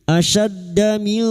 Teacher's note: nun sukun bertemu kaf ikfa hakiki, kita samarkan bunyi nun sukun dan mendengung selama 3 harokat